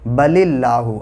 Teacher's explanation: اللہ کے لام سے پہلے زیر ہے اس لیے یہ باریک پڑھا جائے گا